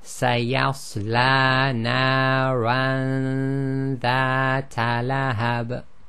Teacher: The noon is hidden in the nasal passage, a ghunna. You move directly to the articulation point of the next letter after the noon sakin. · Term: hiding